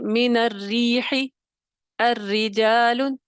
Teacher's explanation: را مشدد کے نیچے زیر ہو، تب بھی را ترکیق کے ساتھ ادا ہوگی، مرققہ ہو جائے گی